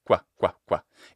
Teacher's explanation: we articulate the U part, the W, at the exact same time as we make the G sound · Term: labiovelar sound